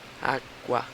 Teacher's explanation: O U é bem baixinho, água. E o A gente fala mais alto. Então, é como se o tom crescesse. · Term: ditongo crescente